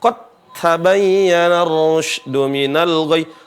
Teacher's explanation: Apa itu idgham? Meleburnya huruf yang pertama, hilang huruf yang pertama, seolah-olah nggak ada, dan pergi ke huruf yang kedua menjadi bertasydid, ya. Jadi cara bacanya qad tabayyana ar-rusydu minal ghayy.